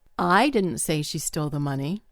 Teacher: I stressed the word I.